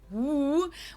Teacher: the English W sound, the woo, where you really don't even touch anything with your lips or teeth